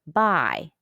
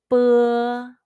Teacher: It's like the P in the English word spa. The Chinese B sound is voiceless. It's different from the B in the English word buy, which is voiced.